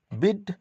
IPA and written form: bɪd (bid)